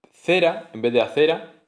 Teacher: elisión o supresión de uno o varios fonemas, incluso sílabas, en la posición inicial de una palabra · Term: aféresis